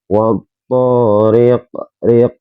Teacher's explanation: di sini ada huruf qa, huruf qalqalah, kok matinya diwakafkan di akhir ayat, maka dinamakan qalqalah kubra.